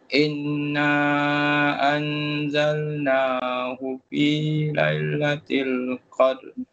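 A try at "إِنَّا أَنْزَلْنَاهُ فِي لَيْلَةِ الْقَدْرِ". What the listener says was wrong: Inna dengungkan dia. Nun sabdu dengung, lepas tu mat tu panjang. Dia ada dia ada tiga hukum kat sini. Satu wajib berguna, lepas tu huruf mat wajib, mat jaiz panjang, lepas tu ifak dia ada tiga hukum kat situ. So kena raikan yang terbaik. Inna anzalnahu fi lailatul qadr.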